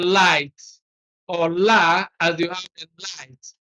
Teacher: We have only one, and that is the L. In producing the L sound, you use the tip of the tongue against the tooth ridge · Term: alveolar lateral